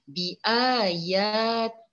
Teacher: maka hukumnya adalah tarqiq lafzul jalalah. Hendaklah dibaca nipis.